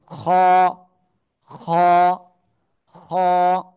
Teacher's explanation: গলার শেষ ভাগ থেকে খ অক্ষরটা উচ্চারণ হবে মোটা আওয়াজে